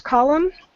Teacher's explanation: It has an M and an N, excuse me. But when we pronounce it, the N is going to be kind of silent, so don't stress over that N at the end.